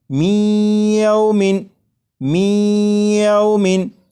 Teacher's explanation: یہ جو آواز ہے می، ای، یہی ادغام ہو رہا ہے، اور ادغام اس طرح کہ نون ساکن کو یا میں شامل کر کے پڑھا جا رہا ہے اور غنہ کر کے پڑھا جا رہا